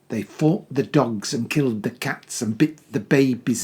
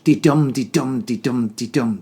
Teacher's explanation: it's the thumping iambic rhythm that really stands out